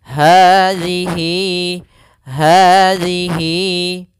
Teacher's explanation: panjangnya huruf Hi kita panjangkan sepanjang dua harakat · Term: mad Silah qasirah